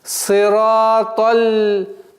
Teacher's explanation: С огласовки фатха перепрыгиваем на удвоенный звук ляма. Сираталь. Сперва удваиваем, а потом произносим огласовку фатха.